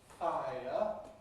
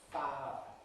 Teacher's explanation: you take a diphthong as, for example, [aɪ], and you lose the second element of the diphthong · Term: smoothing